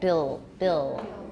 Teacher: my L after vowels is even darker my tongue may not be touching in front no alveolar contact